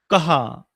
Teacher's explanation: उच्छवास सोडून ह ला झटका देऊन ह असा होतो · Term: विसर्ग